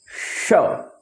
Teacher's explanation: देखिए जैसे अब ये तालु है, जीभ को तालु के पास रख करके बोलेंगे श